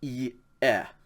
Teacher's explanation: yoda epsilon is not a diphthong so you would pronounce those two vowels separately